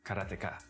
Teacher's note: there's no stress on any syllable